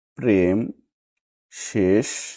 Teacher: তৎসম শব্দের প্রথমে ব্যঞ্জন ধ্বনির সঙ্গে যুক্ত এ ধ্বনির উচ্চারণ সংবৃত হয় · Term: সংবৃত এ